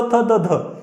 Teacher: साधारणतः या त, थ, द, धचा उच्चार करत असताना जिभेचा समोरचा भाग दाताच्या मुळापाशी येऊन आदळतो आणि तिथे हवेचा स्फोट होतो, म्हणून त्यांना दंत्य असं म्हणतात.